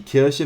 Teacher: Remember to pronounce it with the sh sound, with your tongue touching your bottom teeth.